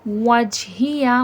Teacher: वाव हुर्फ़ शफ़वी है, होंठों से अदा होगा। होंठों का तंग सा दायरा बनाएंगे, होंठों को गोल करेंगे और पीछे की तरफ मुंह को खोल देंगे।